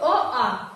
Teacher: अ और आ जो है वो कंठ से बोला जाता है, कंठ से। तो जो भी वर्ण कंठ से बोला जाता है उसको कंठ वर्ण भी हम लोग कहते हैं।